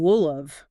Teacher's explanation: Will have became wool of. The H in have disappeared completely. The vowels turn into that tiny weak sound we call the schwa, that little uh sound.